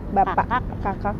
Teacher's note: Nang ada bunyi glottalnya itu. Kalau di dalam bahasa Indonesia bunyi glottal itu seperti pada kata bapak.